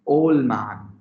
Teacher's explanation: Its elision form will be old man. The D sound is completely dropped over here. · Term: allision